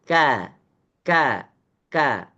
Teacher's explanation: ketika kita melafazkan huruf ka ka ka kita bisa merasakan bahwasannya tidak ada getaran tidak ada lemparan suara ke langit-langit atas hanya Sanya kuat suara itu keluar merayap daripada lidah-lidah kita sehingga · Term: tarqik